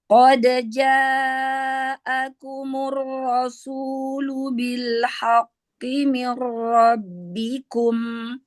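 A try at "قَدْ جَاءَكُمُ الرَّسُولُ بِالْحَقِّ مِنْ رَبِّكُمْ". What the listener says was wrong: Haknya ditipiskan. Qad ja'akumur rasulu bil haqqi mir rabbikum. Haqqi. Haknya ditipiskan. Bil haqqi. Roknya tebalkan. Kumur rasulu. Ro tebalkan, ditebalkan.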